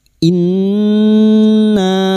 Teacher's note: nun yang bertasdid ghunah musyadadah kita dengungkan selama tiga harakat